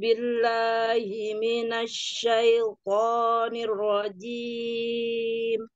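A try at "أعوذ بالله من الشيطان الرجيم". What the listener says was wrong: Ya, ohnya jangan ke hidung, Bun. Ke mulut. Coba.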